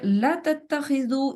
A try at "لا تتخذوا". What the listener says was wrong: لا تتخذوا لام کے بعد الف ڈراپ ہو گیا ہے.